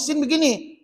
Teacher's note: dia gunakan hujung lidah tekan pada gusi atas maka itulah sebutan Nun